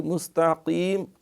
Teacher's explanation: قاف جو ہے اس میں بھی اہتمام سے یہ موٹا ہے